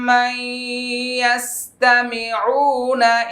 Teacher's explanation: নুন সাকিনের পরে ইয়া আসছে ইদগাম বা গুন্নাটা করে নেবেন। ইয়াস্তামিউনা, একটা মাদের হরফ রয়েছে, হ্যাঁ, পেশের বাম পাশে জজমালা ওয়াও, এটা সবাই আদায় করে নিব।